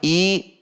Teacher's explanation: I dengan menarik rahang ke bawah, i dengan jelas, tidak dibaca e atau tetapi i.